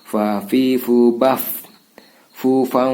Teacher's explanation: Fa fi fu baf fu fa ikhfa samar, ini fathatain ini menyerupai huruf yang depannya fa, gigi depan itu menyentuh bibir bawah